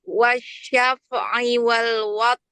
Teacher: Rnya hilang enggak dengar rnya.